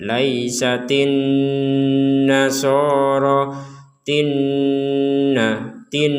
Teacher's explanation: Jadi di rongga hidung kita berdengung, 100% berdengung. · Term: nun bertasydid